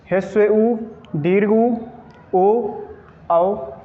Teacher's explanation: अगर ओष्ठ का आकार यदि वृत्त के रूप में हो तो ऐसे वर्णों को क्या कहेंगे, वृत्ताकार स्वर वर्ण